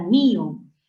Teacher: en mío el acento no recae en la O, en la abierta, sino en la cerrada. Eso es hiato acentual.